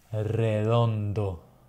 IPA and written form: reˈð̞ondo (redondo)